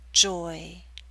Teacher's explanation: you're moving more towards E at the end, so you're pulling your lips outward. Not into a full spread E, but close.